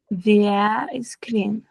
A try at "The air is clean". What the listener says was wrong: Right, that was good.